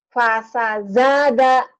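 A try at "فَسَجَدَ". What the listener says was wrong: Jim, keras. Fasajada, fasajada, pendek semua. Iya, keras Jakarta. Jakarta, Jatinegara, jaja, jiji, juju, jaja. Keras.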